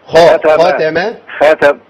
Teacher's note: الخا مفخمه تخين قوي